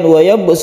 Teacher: wayabbus itu ada Qolqolah Sugro lagi yaitu ba Kita pantulkan juga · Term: qalqalah sughra